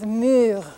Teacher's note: It's a very front vowel, so it's written over here on the left, up next to the E. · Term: front rounded vowels